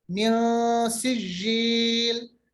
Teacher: नून साकिन के बाद सीन, ये इख्फा होगा नून का